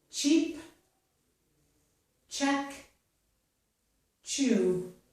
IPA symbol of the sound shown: tʃ